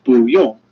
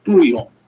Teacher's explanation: the pronunciation of 不, which changes to 不, the second tone, when it's put in front of a character with the fourth tone